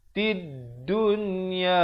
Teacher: Yang mana tak ada tanda mati, lamnya disamarkan, tidak dibunyikan, terus masuk ke dalam dal yang bertanda sabdu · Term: alif lam syamsiah